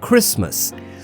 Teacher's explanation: Also notice in Christmas, the T is totally silent.